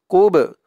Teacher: বা ধরবে বাটা কলকলার হরফ ধাক্কা দিতে হবে